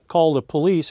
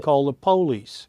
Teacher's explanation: generally in the northern part of the US as police but in the southern part of the u.s. it's pronounced Polly's